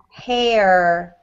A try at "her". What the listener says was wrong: so that sounds like the actual hair on your head. So you need to emphasize on the E-R.